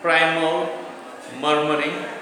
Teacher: This consists of three syllables. The first syllable is stressed and the last two syllables are unstressed. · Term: Dactyl